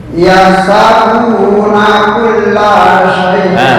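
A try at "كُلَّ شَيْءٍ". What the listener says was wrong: Bukan syoy. Kulla soy.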